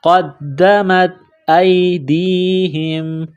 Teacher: دال مشدد ہے تو دال کو دبانا ہے، سختی کرنی ہے